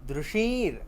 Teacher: દૃશીર પ્રેક્ષણે ધાતુ છે. દૃશીર, શ ઉપર અનુનાસિક છે, તાલવ્ય શકાર છે, સ નથી, શ છે